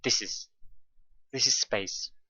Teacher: there is a link in between this and is · the stress pattern is stressed unstressed and stressed